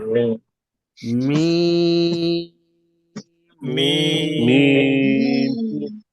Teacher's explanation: lipstick যেখানে লাগায় ঠোটে দুই ঠোটে শুকনা জায়গায় ওখান থেকে মিম উচ্চারণ হয়